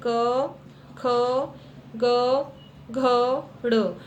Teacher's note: ये वर्ण जब हम बोल रहे हैं, तो ये हमारे कंठ से बोले जा रहे हैं। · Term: क वर्ग